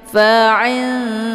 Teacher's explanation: Nun posisinya ujung lidah, dal juga posisinya ujung lidah. Maka untuk ikhfa aqrab ini kalau dibandingkan tingkat kesamaran dan dengungan itu lebih ke samar ya.